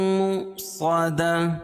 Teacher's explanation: واو لکھی ہے اس کے اوپر حمزہ ہو اور جزم ہو تو وہاں جھٹکا ہوتا ہے